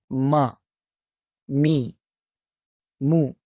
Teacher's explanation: दोनों होठों को आपस में मिलाने से हरफ मीम की आवाज अदा होती है